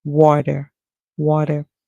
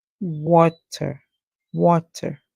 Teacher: the American would pronounce the T as a D sound